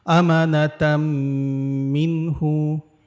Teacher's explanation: এই নুন সাকিনের পরে কিন্তু হা আসছে, এজন্য এই নুন সাকিনটাকে কিন্তু আমরা স্পষ্ট করে পড়েছি ইজহারের নিয়মে।